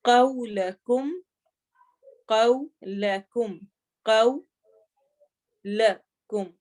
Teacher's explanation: قو میں ہونٹ گول ہوں گے اور قاف موٹا ہوگا